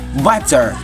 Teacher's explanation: The T between vowels often turns into a quick D sound, like butter.